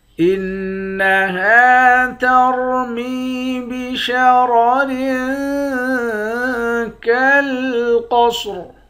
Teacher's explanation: اس والے را کے نیچے دو زیر ہے، یہاں اخفا کریں گے۔ قاف اور صاد ان دونوں حرف کو موٹا پڑھیں گے، آخر میں را ساکن ہے۔ · نون مشدد پر غنہ کریں گے۔ ہا کے بعد الف ہے، الف حروف مدہ ہے، ایک الف کی مقدار کھینچ کر پڑھیں گے۔ را کو موٹا پڑھیں گے، میم کو یا کے ساتھ ملا کر ایک الف کی مقدار کھینچیں گے، اس را کو بھی موٹا پڑھیں گے۔